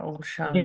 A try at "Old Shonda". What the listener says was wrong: if it's small, it would be Sean. It should be a SH sound, not a TH. Sean. Sean, like in small. Like you say, Sean. Sean, like a SH sound.